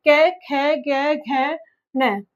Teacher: क वर्ग है जिनका गले से उच्चारण होता है।